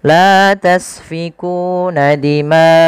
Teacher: Kemudian pada lafal dima'akum, panjangkan huruf ma atau panjangkan bacaan ma sepanjang 4 harakat karena pada lafal ma ini ada bacaan mad wajib muttasil. Mad wajib muttasil terjadi ketika adanya mad tabi'i yang bertemu dengan huruf hamzah dan hamzah tersebut pada satu kata.